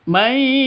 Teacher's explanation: Sini ada nun mati bertemu dengan ya. Cara bacanya masuk ke ya disertai dengung karena idgham bigun bighunah. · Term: idgham bighunah